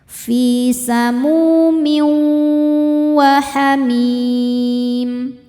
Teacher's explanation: Cara membacanya bunyi tanwin ini dileburkan ke waw disertai dengungan. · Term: idgham bi gunnah